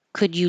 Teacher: the D and the Y make a j